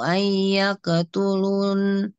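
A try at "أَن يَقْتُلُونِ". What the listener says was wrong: Kurang panjang. Ayyaqtulun.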